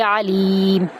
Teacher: عین کو وسط حلق سے ادا کرتے ہوئے ادا کریں گے. لیم، یہاں پر ہم لام کو یا میں داخل کریں گے، یا مدہ ہے، لمبا کرتے ہوئے اور میم کی آواز کے ساتھ آیت کا اینڈ کریں گے.